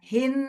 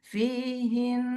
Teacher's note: Dimasukin tuh ke rongga hidung dan dengung tuh.